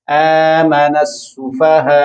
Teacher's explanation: حمزہ کے اوپر آپ نے جب جزم پڑھی اس کو جھٹکا ملے گا ہلکا سا